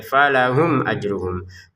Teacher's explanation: Jelas artinya tidak ada samar tidak ada dengung. · Falahum mim sukun bertemu hamzah. Kita baca dengan jelas ya.